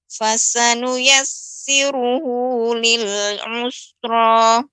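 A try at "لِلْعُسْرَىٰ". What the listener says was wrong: Nah, ini juga berarti huruf sin ya, Ibu, terkadang ini terasa tebal lagi ya. Usra lebih dibanyak lagi desisnya dan bukan usra. Jadi lebih dibuka mulutnya ya, kemudian di rahangnya lebih ditarik sedikit ke bawah. Hus ya, hus seperti itu, lebih dibuka Ya, silakan.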